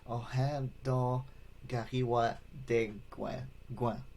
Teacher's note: the K's are pronounced more like a G sound and the T is pronounced more like a D sound · the ends at the end, they're more of a nasal sounding